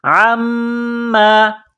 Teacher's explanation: میم مشدد ہے تو غنہ کرنی ہے یہاں پر